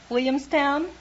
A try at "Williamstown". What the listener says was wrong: What happened to the L's? You knocked the L's out of that word. Can't you say Williamstown?